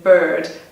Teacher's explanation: like in bird, I don't pronounce the R